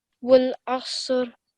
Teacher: This Saad again is a thick and heavy sound